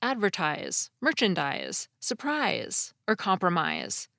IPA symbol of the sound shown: z